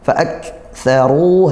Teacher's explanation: kaf sukun kita kuatkan dulu, tekan kemudian didesiskan, baru keluar desisannya, nah, kemudian fa'aktsaru, hati-hati setelah desis dia huruf fa didesis juga, fa'aktsaru.